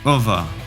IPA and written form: əvə (of the)